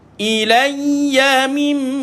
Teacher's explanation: Beza dengan sabdu yang lain. Sabdu mim dan sabdu nun dia lama sikit kena tekan, sebab dia huruf gunnah yang pergi ke hidung.